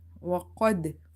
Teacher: there is a bounce or reflection in the sound. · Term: qalqala letter